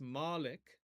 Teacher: The E between the L and the K, or the Lamed and the Kaf, that is what we call an anaptictic vowel. anaptictic, which is really just a helping vowel.